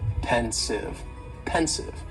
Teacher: just 2 syllables, and the stress is on that first syllable.